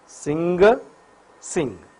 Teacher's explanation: the air from the lungs passes through this nasal cavity, escape through the nose. Vocal cords vibrate. So, N is voiced, velar, nasal.